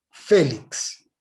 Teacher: félix es una palabra cuya sílaba tónica es la penúltima y termina en consonante